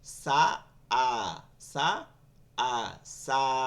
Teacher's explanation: আলিফের মাখরাজ হচ্ছে মুখের খালি জায়গা কোন জায়গায় বাজে না